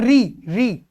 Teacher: तो री का जो उच्चारण है वो मूर्धन्य से होता है, मगर ये व्यंजन की तरह इसका उच्चारण होता है री।